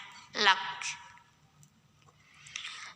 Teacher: Dan untuk kaf yang sukun, anginnya itu belakangan, setelah keluar suaranya.